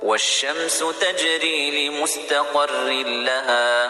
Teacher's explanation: تنوین کے بعد لام آیا ہے اس لیے اسے لام میں ملائیں گے، اور تنوین کی آواز جو نون ساکن کی آواز پیدا ہوتی وہ نہیں آئے گی. لمستقر رن نہیں پڑھیں گے. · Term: ادغام تام